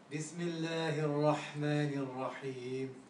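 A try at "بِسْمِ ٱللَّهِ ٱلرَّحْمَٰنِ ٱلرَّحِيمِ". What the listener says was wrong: The B, we shouldn't go B. It's Bismillahir Rahmanir B. You shouldn't have a vibration on the ba because you're already exiting the ba. Bismillahir Rahmanir Rahim.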